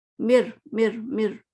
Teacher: میم میم جو ہے نا، رو سے مکمل ادا مل رہا ہے کہ ہمیں نون کی آواز نہیں آ رہی، ہمیں کوئی اور لیٹر کی آواز نہیں آ رہی، ہمیں رو ہی سنائی دے رہا ہے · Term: کامل